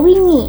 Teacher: kecenderungan bahasa Jawa untuk menghindari vokal pepet. Diganti dengan vokal penuh seperti i agar lebih tegas.